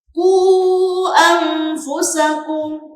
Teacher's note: Panjangnya sama, 2,5 alif atau lima harakat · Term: Mad Jaiz Munfasil